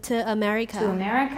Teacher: there's a w linking sound there for me a linking a linking a glide there